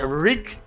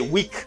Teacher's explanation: You don't have an R sound, you have a W sound.